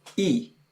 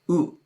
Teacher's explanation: E is higher, and it's more toward the front of your mouth, whereas oo is back just a hair.